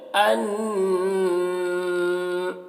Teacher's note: تو جب یہاں ٹھہر جائیں گے تو اس کو ان نجمج پڑھیں گے، ٹھیک ہے؟ ان، اب نون مشدد ہے تو نون میں غنہ کریں گے